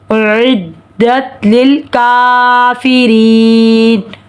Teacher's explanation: تا ساکن آواز رکے گی، لام ساکن آواز رکے گی، کاف باریک ہے، پڑھا جائے گا، کاف پر کھڑا زبر ہے، ایک الف کے برابر کھینچیں گے۔ را کے نیچے زیر ہے، را باریک پڑھی جائے گی۔ ری پہ یا مدہ اور ایک الف کے برابر کھینچیں گے، پھر مدہ کے بعد سکون عارض ہے تو مد عارض ہوگی۔